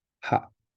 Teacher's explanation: You're trying to do just a very short ah sound, ha. And this is kind of like a question mark almost.